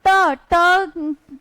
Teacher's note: अगर हम ट ट का यूज़ हम कहां से करते हैं? मुंह की छत से। मतलब जिसको हम कहते हैं मूर्धा।